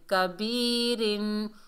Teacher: را کو باریک پڑھیں گے 2 زیر کی وجہ سے